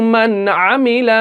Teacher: नून को कैसे पढ़ेंगे, जाहिर करके पढ़ेंगे। हम यहां पे गुन्ना नहीं करेंगे, बगैर गुन्ना के पढ़ेंगे।